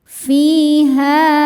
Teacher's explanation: Ha mad tabi'i dhahiri karena ada alif didahului fathah, maka huruf ha panjang 2 harokat.